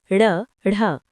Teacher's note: जिनके उच्चारण में जीभ पहले ऊपर उठकर मूर्धा को स्पर्श करें और फिर झटके के साथ नीचे को आए उत्क्षिप्त व्यंजन कहलाते हैं।